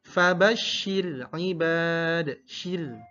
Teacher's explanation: Jadi ra-nya ra tipis karena didahului harokat kasrah